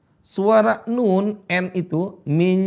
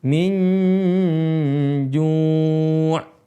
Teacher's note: Min, kayak seolah-olah INJ, minj, itu. Suara n-nya menuju makhraj huruf jim. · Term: nun sukun